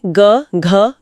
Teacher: सघोष में कंपन होता है। इसकी ट्रिक है वर्ग का तीसरा, चौथा और पांचवा वर्ण।